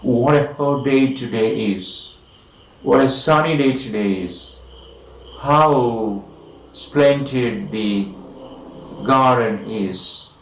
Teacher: in all these exclamations we have, of course, the falling tune